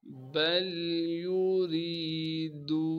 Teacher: یا کو بغیر کھینچے پڑھنا ہے۔ را کے نیچے زیر ہونے کی وجہ سے را کو باریک کر کے پڑھیں گے اور را کو آگے یاء مدہ سے ملا دیں گے جو کہ ساکن ہے۔ · را کے نیچے زیر ہونے کی وجہ سے را کو باریک کر کے پڑھیں گے اور را کو آگے یاء مدہ سے ملا دیں گے جو کہ ساکن ہے۔ یا مدہ ہونے کی وجہ سے را کو ایک الف کے مقدار کھینچیں گے